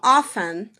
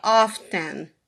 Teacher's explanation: 48% não pronunciam T, eles falam often. E 33% sim, pronunciam o T, often.